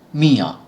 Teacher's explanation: অন্তস্থ অ এবং সঙ্গে চন্দ্রবিন্দু যোগে উচ্চারিত হচ্ছে